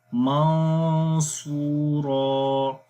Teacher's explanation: تو یہاں پر پڑھیں گے منصورا، صاد کو موٹا پڑھیں گے اور اس کی وجہ سے جو غنہ ہو رہا ہے وہ بھی موٹا ہوگا، منصورا۔ تو اگر آپ نے اس کو پڑھا منصورا تو وہ غلط ہو جائے گا، کیونکہ اس میں آپ زبان کی نوک کو نون کے مخرج میں سختی کے ساتھ لگا رہے ہیں، جو کہ غلط ہے۔